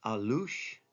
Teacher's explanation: Accent's always on the second syllable.